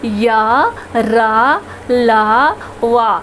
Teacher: आप र भी बोलिए तो जीभ किसी भी भाग को पूरी तरह से स्पर्श नहीं करता है, इसीलिए इसे अंतस्थ व्यंजन कहा गया है, क्योंकि इनको उच्चारण करने में जीभ मुख के किसी भी भाग को पूरी तरह से स्पर्श नहीं करती है। य, र, ल, व, ये चारों अंतस्थ व्यंजन है।